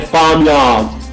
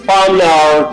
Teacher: in British accent, you don't pronounce the R. Usually it is dropped